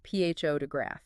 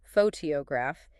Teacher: in photograph, the stress is on the first syllable